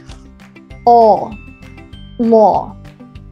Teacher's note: the back of the tongue goes down and the soft palate goes up.